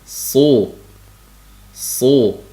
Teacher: itboq sifati borligi uchun tanglayda bir oz qamalib keyin so' si siy deb talaffuz qilinadi